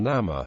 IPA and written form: ˈnɑːmə (Nama)